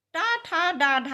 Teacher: इनका उच्चारण स्थान मूर्धा होता है